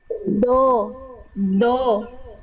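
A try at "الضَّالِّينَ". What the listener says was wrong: Oke, bibirnya nggak boleh monyong. Bibirnya tidak boleh muncung. Bo, tidak, bo, tidak, tapi bo, bo, bo, bo, bo, bo, wala bo, wala bo. Nanti dilatih lagi ya huruf dotnya. Jangan monyong, diangkat pangkal lidahnya. Jadi bunyi vokal O-nya itu bukan bertumpu pada kita, pada bibir kita yang kita monyongkan, tapi diangkat pangkal lidahnya. Bo, gitu ya.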